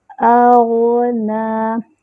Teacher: اغنى، حمزہ کا مخرج اقصی الحلق، غین کا مخرج ادنی الحلق، اور غین میں تھوڑی سی آواز چلتی ہے، ٹھیک ہے، لیکن غین ساکن ہے، غین کو ہلانا نہیں ہے۔